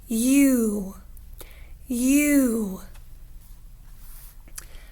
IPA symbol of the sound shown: yu